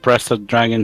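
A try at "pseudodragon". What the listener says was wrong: Pseudo. Pseudo. The P is silent.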